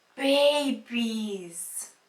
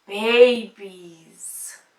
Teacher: So in this example, we can hear the sound Z at the end because the words are in plural